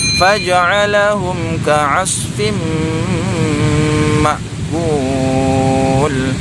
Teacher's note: ada tanwin berjumpa dengan huruf mim, hukum bacaannya adalah idgham bi gunnah. Cara membacanya didengungkan ya.